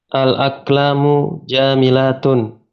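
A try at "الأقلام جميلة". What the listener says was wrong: Nah, jami bukan ja. Jami. Al-aqlamu. Al-aqlamu jamilatun. Naam, sahih.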